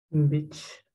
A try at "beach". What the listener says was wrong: Pero tienes que hacerlo larguito. Beach. Beach. Inténtalo. larguito y abro mi boca.